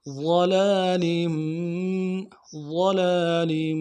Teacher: ضاد کو موٹا ادا کریں گے، لام کے اوپر کھڑا زبر ہے، ایک الف دار میں کھینچیں گے. آگے لام ہے، تنوین کو آگے میم کے ساتھ ملانا ہے.